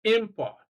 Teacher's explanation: the prefix is stressed for a noun that can also be used as a verb